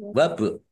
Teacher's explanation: Ba sukun bacaan qalqalah dibaca memantul ditampakkan pantulannya.